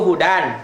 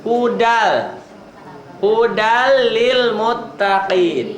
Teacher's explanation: Harusnya kan begitu hudan. Tetapi diidghamkan jadi dileburkan. Dilebur. Dibacanya hudal. Hudal lil muttaqin. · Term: idgham bila gunnah